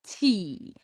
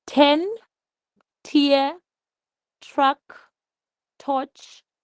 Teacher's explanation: Quickly remove the tip of the tongue to let air out suddenly. There should be no vibration in your vocal cords